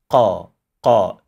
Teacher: pronounced from the farthest back of the tongue by touching the soft palate over here, as you can see in the illustration, to create a thick sound. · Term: qaf